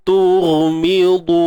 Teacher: Cuba latih huruf gha ini dia hujung kerongkong